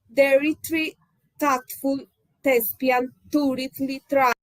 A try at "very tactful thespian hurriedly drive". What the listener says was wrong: It's sounding like D's instead of THs. TH is missing. Sounds like a D.